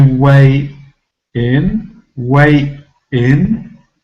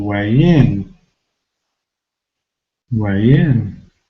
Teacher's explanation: I carry over the sound, the y sound, into the next syllable